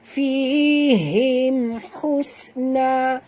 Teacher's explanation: mim bertemu dengan ha tak boleh dengung, izhar syafawi